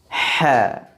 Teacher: ruang antara permukaan lidah dengan langit langit atas terbuka tidak tertutup maka keluar pula suara yang tipis sama dengan sifat sebelumnya tadi ha sifat huruf ha yang kelima · dan susah diucapkan Kenapa huruf ha disifati dengan sifat Ismat karena posisi makhraj huruf ha jauh dari dua bibir yakni dari tenggorokan tepatnya di bagian tengah karena jauh maka dia akan melewati beberapa makhraj dulu sebelum keluar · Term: infitah